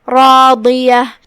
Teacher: ہم را کو اور اس کے بعد مد الف کو اور ضاد کو، یہ تینوں حرف کو ہم تفخیم سے ادا کریں گے. آخری میں یہاں بھی تاء مدورہ پہ ہم رکیں گے تو اس پہ ہا سے رکیں گے.